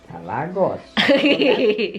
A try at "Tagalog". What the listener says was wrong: No. Tagalog. G in the end. Tagalog.